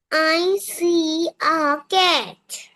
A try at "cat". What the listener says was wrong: ক্যাট না, খ্যাট।